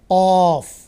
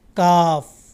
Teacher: اور آخر پر 5ویں نمبر پر قاف اور کاف، ان دونوں میں فرق یہ ہے کہ اس کے مخرج میں قاعدہ یہ لکھا جاتا ہے کہ جڑ زبان تالو سے مل کر قاف یعنی 2 نقطے والا قاف ادا کیا جاتا ہے، اس کے تھوڑے سے آگے کاف ادا کیا جاتا ہے